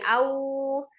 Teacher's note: Sempurnakan wau sukunnya juga dengan memajukan kedua bibirnya ya.